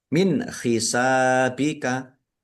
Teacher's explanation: Min hisabika nun sukun bertemu dengan huruf ha. Bacaan izhar dibaca jelas. Kemudian sin fathah alif mad thobi'i panjang dua harakat.